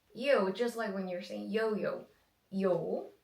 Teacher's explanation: But remember, you don't have any oo sound after.